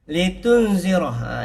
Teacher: Ini ada nun mati bertemu dengan zai. Di sini juga ada huruf ikhfa. Ada dengung, dua harakat.